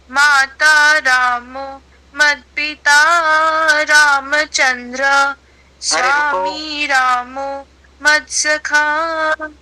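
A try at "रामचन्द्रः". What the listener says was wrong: रामचंद्र नहीं है, रामचंद्र रामचंद्र रामचंद्र। रामचंद्र विसर्ग है ना, जो है उसका उच्चारण होगा। हम अंग्रेजी में नहीं पढ़ रहे हैं ना कि साइलेंट हो जाएगा।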